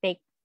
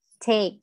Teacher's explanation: letter T, when found in the beginning of the word, just like letter P should be aspirated. So instead of saying take, it's take. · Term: normal T